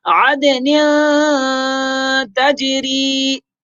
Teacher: عد دال میں قلقلہ کریں گے اور نون دو زیر تو تنوین میں اخفاء کریں گے، غنہ کریں گے